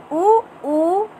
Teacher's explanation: ओष्ठ ध्वनि है, इसको बोलने में ओष्ठ से ध्वनि बाधित होकर बाहर आती है